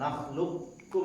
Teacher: Boleh idgham naqis. Idgham kamil itu disempurnakan saja kafnya, qafnya masuk kaf.